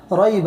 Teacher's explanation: ریب، را یا زو ری، یہ لین ہے اس لیے اس کو نرم آواز سے جلد پڑھیں گے